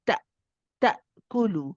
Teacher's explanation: the hamza is shidda, so sharpen, stop the sound suddenly.